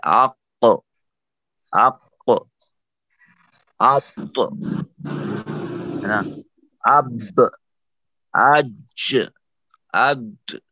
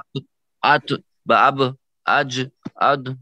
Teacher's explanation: قلقلہ کی آواز ایسی ہے جیسے آدھے پیش کی آواز ہے